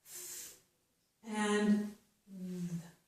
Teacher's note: Both of these sounds are made with the tip of our tongue between our upper and lower teeth. And it's really only the very tip of the tongue. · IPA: / θ /